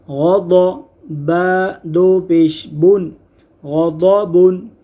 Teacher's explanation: غین اور ضاد دونوں حروف مصطلحہ ہیں۔ غین اور ضاد حروف مصطلحہ ہیں، ان دونوں کو ہمیشہ پر یعنی موٹا پڑھیں گے۔